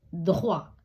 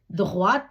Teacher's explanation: துஹ்வாக்கு தே உச்சரிக்கப்படவில்லை துஹவாத்துக்கு தே உச்சரிக்கப்படுது